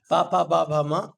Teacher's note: ये 5 व्यंजन उष्ट से बोले जाते हैं, तो इन्हें उष्ट वर्ण कहे जाते हैं